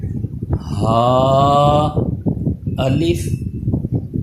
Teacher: اس ہا پہ یہ حلق کے نیچے والے حصے سے ادا ہوگا، اس میں سانس کی آواز مکس نہیں ہونی چاہیے، اس ہا اور ہا میں واضح فرق رہے۔